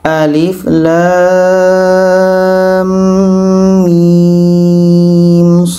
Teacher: la panjang 6 harakat setelah itu dengung dua harakat karena idgham di sini setelah itu panjang 6 harakat mimnya setelah itu panjang en harakat